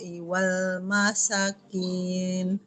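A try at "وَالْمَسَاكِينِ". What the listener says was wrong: sinnya panjang seharusnya di sini ada mad ada alifnya ya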